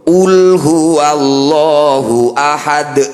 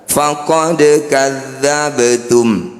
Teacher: Qul huwallahu ahad, ada di ujung bacaan berarti disebut qalqalah kubro. Pantulannya dinampakkan. Kalau di tengah faqad kadzdzabtum, dialirkan saja atau kecil qalqalahnya.